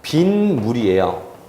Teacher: 그런데 이 시옷은 그냥 발음이 안 되기 때문에 디귿으로 바뀌어요. 그런데 디귿 더하기 미음 하면은요, 비음화가 생기기 때문에 디귿이 니은으로 바뀌어요. 그래서 발음은 바로 뭐냐면 빈물이에요.